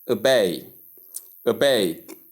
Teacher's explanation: the stress comes right on the second syllable